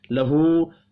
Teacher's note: ہا کے اوپر الٹا پیش ہے، ایک الف کے برابر کھینچ کر پڑھیں گے۔